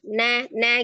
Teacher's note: huruf nun itu ujung lidahnya kan ada di langit-langit ya